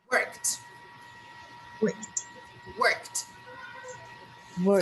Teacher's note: we go from K to T. We jump. We don't pronounce E and we don't pronounce D. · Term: sound of T